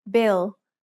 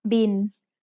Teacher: It's the word bill, but we read it in Thai as bin. Thai doesn't naturally have the L sound at the end of a syllable, so it changes to sound like the letter N.